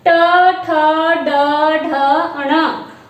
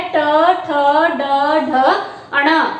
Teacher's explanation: मूर्धा, हमारी जिह्वा जो है वो मूर्धा को स्पर्श करती है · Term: मूर्धन्य ध्वनियां